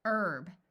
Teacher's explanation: note that in the US the H is silent in this word but in some countries the H is pronounced